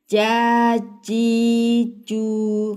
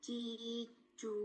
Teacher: Tengah lidah bertemukan dengan langit-langit di atasnya baru bicara.